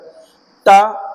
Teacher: त अल्प प्राण है दंत है